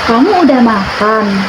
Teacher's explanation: itu namanya pakai intonasi naik ya, karena itu merupakan kalimat pertanyaan.